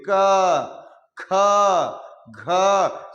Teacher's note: पहले यहां देख लीजिए कंठ, कंठ का उच्चारण जितने भी क ख ग घ अड़, जो देखिए बोलिए क ख घ, सब जो बोल रहे हैं वो कहां से बोल रहे हैं, कंठ से बोल रहे हैं। इसीलिए क ख ग का जो पांचों वर्ण होगा वो कंठ से उसका उच्चारण स्थान होंगे